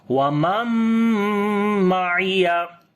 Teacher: We make idgham with gunna. So this noon we convert into meme, and then only meme sound we say instead of noon, like complete gunna.